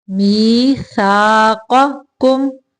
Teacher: پہلا قاف موٹا، دوسرا قاف باریک ہے